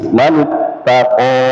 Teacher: mantaqo di sini jangan tnya terpengaruh dengan qof ya